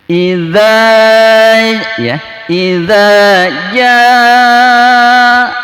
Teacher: Idza ja di sini disebut mad wajib muttasil ya. Mad ketemu hamzah dalam satu kalimat itu disebut mad wajib muttasil ya, mesti panjangnya 6 harokat ya.